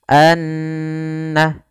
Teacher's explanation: Nun yang berharakat tasydid keduanya dinamakan dengan ghunnah cara membacanya yaitu suara annya kita tahan Anna baru dilepaskan sehingga dipanjangkan sekedar kadar dua harakat lebih sedikit